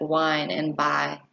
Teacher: six front smiley vowel sounds a front smiley vowel sound is produced with the highest part of the tongue pushed forward and the mouth and somewhat arched the eyes sound can be